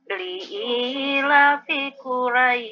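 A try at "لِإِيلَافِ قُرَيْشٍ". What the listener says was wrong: La-nya harus dipanjangin, Bu, 2 harokat. Jadi liila. Shinnya jangan dihilangin. Syil. Syil. Ditekan.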